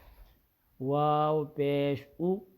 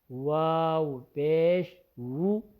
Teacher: واو یعنی حمزہ کی آواز نہ آئے، واو کی آواز آئے